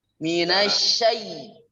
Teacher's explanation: Ya-nya di sana tetap tengah-tengah lidahnya ke tengah langit ya, ke tengah-tengah. Ke langit-langit. Minasyai. Tidak perlu dibantu bibir.